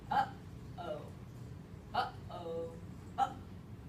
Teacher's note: you could literally feel the air stopping right in your throat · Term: glottal stop